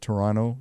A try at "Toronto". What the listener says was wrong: Toronto. No, you say the second T is silent almost. Toronto.